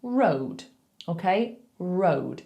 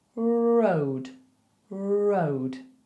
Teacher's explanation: When we are making that R, your tongue should make a little bowl. So the tip of your tongue curves upwards towards your teeth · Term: R sound